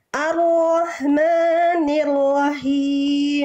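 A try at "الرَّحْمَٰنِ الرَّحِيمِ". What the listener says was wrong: jangan sampai Kepanjangan Cukup dua harakat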